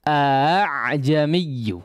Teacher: Nah, sebagaimana disebutkan dalam keterangan, hamzah yang pertama dibaca dengan jelas ya, a. Tapi yang kedua samar saja, tidak perlu sampai merapat seperti hamzah yang pertama. Jadi dibaca a'jamiyyu. · Seolah kita ingin mengucapkan hamzah tapi tidak sampai rapat ya pangkal tenggorokannya itu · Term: tashil